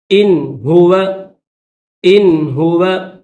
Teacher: یہاں پر نون ساکن ہے اور اس کے بعد حروف حلقی جو ہے ہا ہے تو اس وجہ سے یہاں پر غنہ نہیں کریں گے